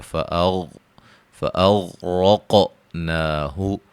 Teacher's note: غین کو موٹا، را کو موٹا، قاف کو موٹا، قاف پہ قلقلہ کریں گے